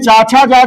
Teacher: जीभ तालु से टकराती है, तालु वर्ण हो गया